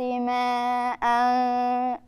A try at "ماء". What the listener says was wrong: يعني أنت خليتهم أقل من الطبيعي كمان.